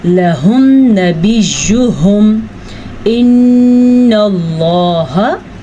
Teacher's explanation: لفظ اللہ سے پیچھے والے حرف پہ زبر ہے تو لفظ اللہ پر پڑھا جائے گا۔ نون کے اوپر شد ہے تو نون کے اوپر غنہ کیا جائے گا۔